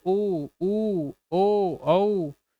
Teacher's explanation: इनका उच्चारण में हमारे जो लिप्स है वो क्या हो जाते हैं गोल हो जाते हैं